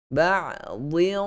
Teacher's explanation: So dia terikut tanwin, minta maaf, tanwin yang pada huruf dad itu kita akan bunyi gunnah dengan tebal, masukkan terus ke dalam huruf qaf. Ba'dhin, beza dengan ada yang sebut tidak tebal.